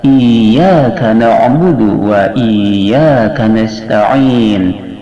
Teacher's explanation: Iyyaka di sini iyanya ditasdid sehingga musyaddad hukumnya, maka harus seakan-akan ada 2 iya.